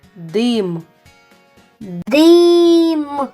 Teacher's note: в цьому слові чутно твердий приголосний д